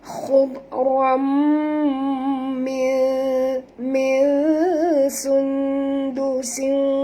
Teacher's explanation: tanwin bertemu dengan mim, kita kena masukkan sepenuhnya bunyi tanwin ke dalam mim disertai dengan dengung, idgham ma'al gunah.